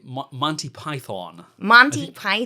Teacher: With a long O at the end of Python, whereas by English accent, it's more of a schwa.